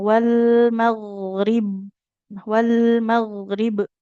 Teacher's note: pangkal lidahnya terangkat atau huruf yang tebal. Makanya ketika disukunkan nggak boleh dipantul. Nggak boleh wal maghrib, mag. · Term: huruf ghain sukun